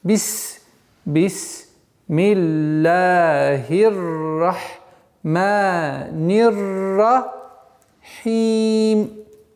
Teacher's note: при остановке последняя огласовка аннулируется и переходит на сукун. Переходит на сукун.